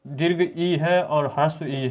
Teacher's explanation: दीर्घ ई है और ह्रस्व ई है, इन दोनों का उच्चारण स्थान तालु से होता है